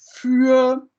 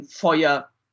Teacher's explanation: the Ü becomes a diphthong oi, and an additional unstressed E is put in Feuer. Same for vier becomes fire, and so on. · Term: Sprossvokal